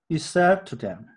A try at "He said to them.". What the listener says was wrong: 근데 them 할 때도 혀가 윗니의 뒤에 부분에 닿도록 하면 안 되고 무조건 TH 발음은 혀를 좀 빼줘야 돼요. 윗니와 아랫니 사이로. 2 하고 them 하는 게 쉽진 않아요. He said to them. 쉽지 않지만